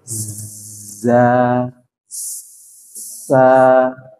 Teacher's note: suara yang tajam jadi mereka ini punya punya sifat namanya saofir tajam